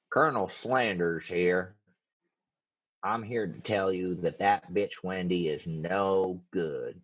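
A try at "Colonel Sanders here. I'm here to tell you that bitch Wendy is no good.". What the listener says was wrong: Start over. He has a little bit higher voice. You said Sanders.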